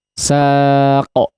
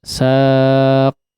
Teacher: sifat qalqalah yang dimiliki oleh huruf qaf di sini jangan telat ya